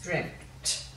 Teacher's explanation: it sounds like there's a p there but there's not your your mouth nearly goes to form the p but there's no p